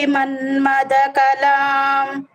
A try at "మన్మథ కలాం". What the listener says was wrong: ఇది కూడా ఎక్కడ ఆపాము? అదే ఎక్కడ ఆపాము? పైకి ఆపామా కిందకి ఆపామా? మన్మద కలాం ఒకే లైన్లో ఆపాం. కలాం అని డౌన్ చేయకూడదు అనమాట.